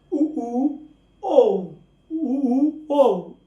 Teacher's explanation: वे स्वर जिनके उच्चारण में मुख वृत्त जैसा हो जाता है, जैसे गोल गोल वृत्त होता है वैसा हमारा भी मुंह हो जाता है। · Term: वृत्तामुखी